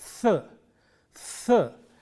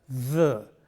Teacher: The friction is very important here, and if you voice this sound, you get the.